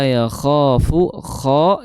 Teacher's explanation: kho itu makhrajnya di tenggorokan bagian atas